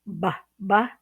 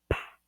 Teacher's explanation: B, b, and then the aspirated p, p